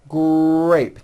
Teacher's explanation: It is important to understand that the R sound is the strongest sound of the blend, and your lips often come forward before you even say the word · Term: R blends